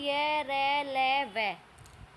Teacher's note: जिन व्यंजनों के उच्चारण में मुख बहुत संकुचित हो जाता है, यानी सिकड़ जाता है, फिर भी वायु स्वरों की भांति बीच से निकल जाती है, उस समय उत्पन्न होने वाली ध्वनि अंतस्थ व्यंजन कहलाती है।